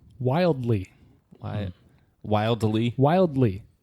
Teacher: wildly technically should be a two- syllable word but the way we pronounced wild makes it more like a two and a half syllable word